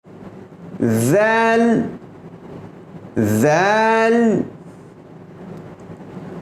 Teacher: ذال، ذا اور ثا، ذال، ظا اور ثا یہ تینوں حرف جب زبان کی نوک اس امیج میں دیکھ سکتے ہیں، زبان کی نوک it touches the edge of the top 2 teeth۔ زبان کی نوک اوپر کے 2 دانتوں کے کنارے سے لگ کر کے یہ حروف ادا کیے جاتے ہیں